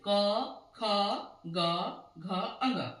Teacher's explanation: अगर आप उच्चारण करते हैं क वर्ग का तो देखिए कहां से उच्चारित हो रहा है कंठ से